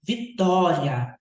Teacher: A semivogal e a vogal, elas estão na mesma sílaba. E esse é um ditongo crescente, porque o i é mais baixinho e o a é mais alto